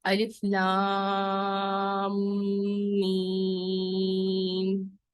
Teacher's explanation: میم کے بعد میم آ گیا اور جب دو میم ایک ساتھ آتے ہیں تو پھر غنہ بھی ہوتا ہے